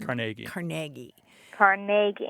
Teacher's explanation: Accent on the second syllable with more of an a than a e